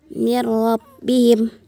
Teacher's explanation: nun sukun bertemu dengan huruf ro. tanpa tanpa dengung dan ditasdidkan dihukumkan dengan idgham bila gunah. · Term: idgham bila gunnah